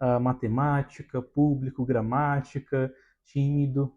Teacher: têm essa característica de ter a tonicidade, a sílaba tônica, na antepenúltima sílaba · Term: proparoxítonas